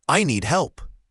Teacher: Here, the D at the end of need is often very light, almost swallowed, especially before another consonant like help. And help has a clear L sound and then a P sound, closing your lips.